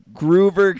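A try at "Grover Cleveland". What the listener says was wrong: Is he Groover? Yeah, you said Groover.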